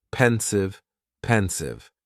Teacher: Just 2 syllables. And the stress is on that first syllable